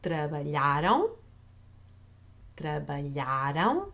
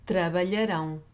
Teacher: You're stressing the A in trabalharam. So we have an open A versus in trabalharão. We don't have that open A anymore